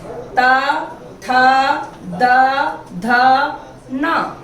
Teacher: जब न का उच्चारण हमने किया तो जीभ थोड़ी पीछे जाकर के मसूड़े से टच हुई